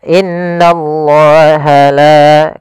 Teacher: pada lafal la tipis, yaitu ketemu dengan alif, maka dia hukum tajwidnya namanya mad tabi'i, yaitu fathah bertemu alif, panjangnya 2 harakat.